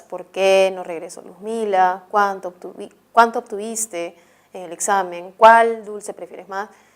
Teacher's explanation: Estas preguntas son descendentes porque no pueden ser respondidas con un sí o un no